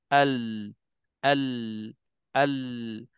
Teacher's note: Adapun untuk inhiraf, bab lencong ni, dalam bab ini, dalam bab sifat ini, sebenarnya dia nak bagi tahu kita, huruf lam ni, waktu kita nak sebut, dia datang daripada tepi lidah dan dia melencong bahagian depan tepi lidah kita tu, dia melencong kedua-dua pihak